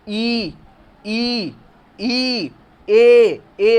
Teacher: अग्र से बोल रहे हैं तो हमारी जीभ जो है आगे की तरफ आ रही है